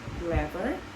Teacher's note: the word clever, which is stressed on the first syllable